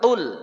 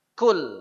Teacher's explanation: Huruf qaf itu keluar pada pangkal lidah. Bagian lidah paling belakang.